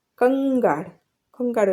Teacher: આપણે અહીંયા એનું આ જે અનુસ્વર છે એનો ઉચ્ચાર અંગ કરીએ છીએ